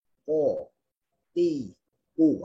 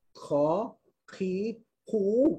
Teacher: Huruf qaf dia tidak ada angin.